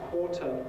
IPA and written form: ˈkwɔːtə (quarter)